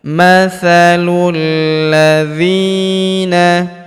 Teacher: huruf dzi kita panjangkan dua harakat karena terdapat ya sukun · huruf lu langsung sambung lompat masuk ke huruf lam yang berharakat tasydid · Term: Alif lam syamsiyah